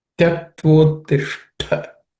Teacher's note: Tyaktvottishta, again the last letter, ishta, is ish is cerebral sh, and ta is aspirated